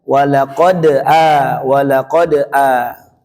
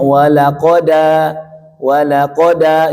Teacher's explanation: Jadi harokat hamzah yang fathahnya itu diambil oleh dal. Walaqad a, jadi bunyinya walaqada, walaqada, jadi sudah diambil. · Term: naql